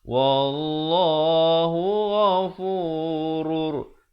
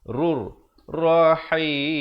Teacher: Ya, tanwin bertemu ra. Asalnya ghafurun. Tapi bila datang ra jadi masuk tanpa dengung. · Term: idgham bila gunnah